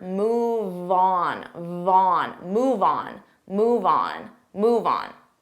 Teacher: Move on, you have the on move. Now on is a vowel, so we can transfer that sound and we can say these two like one word.